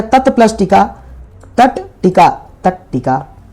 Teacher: तो इस त का क्या हो जाएगा? यहाँ देखो, त का हो जाएगा ट, इस त का क्या हो गया? ट। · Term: ष्टुत्व संधि